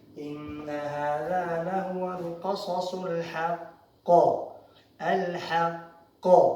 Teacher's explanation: Aquí hay que parar, entonces hay que hacer qalqala grande. Qalqala, porque el qaf lleva sukun, hay que hacerla grande